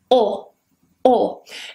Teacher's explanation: it's not as rounded like ooh it's not smiling like air and it's not spread or smiling like II kind of in between or oh oh now the tongue it comes back a little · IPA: /ɒ/